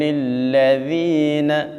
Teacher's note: لم یکن الذین، جب ذال کو ادا کرنا ہے تو اپنی زبان کی نوک یہ والی اس کو لگانا ہے اوپر کے دانتوں کے ساتھ، ٹھیک ہے۔ ذال میں سیٹی پیدا نہیں کرنی